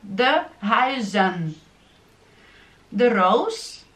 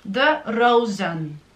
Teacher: S опять же переходит в Z во множественном числе